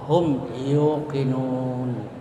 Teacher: mim disuarakan dengan terang dan jelas di bibir serta mulut tertutup